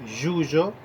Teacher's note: la Y y la doble L, que se escriben diferentes pero se pronuncian igual